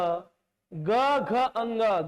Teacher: स्वर तंत्री में ऐसा कंपन टाइप का हो रहा है थोड़ा सा वाइब्रेशन हो रहा है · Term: सघोष